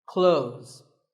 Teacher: When we say clothes, the TH in the middle can often be silent.